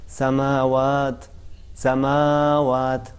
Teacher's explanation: میم کو زیادہ کھینچا ہے, دو حرکت نہیں تھا بلکہ تین حرکت سے بھی بڑھ کے انہوں نے کھینچا ہے. حالانکہ اس کے جو کھینچنے کی جو حد ہوتی ہے وہ فقط دو حرکت ہوتی ہے, یعنی اتنا اس کو کھینچا جائے کہ جو ایک حرکت ہوتی ہے اس میں اور اس میں فرق پیدا ہو جائے.